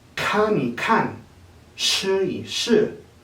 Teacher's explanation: Cuando aparece un verbo y luego el número 1 y luego otra vez el mismo verbo, como suele pasar con algunas frases muy particulares en chino, el tono del número 1 cambiará a tono neutral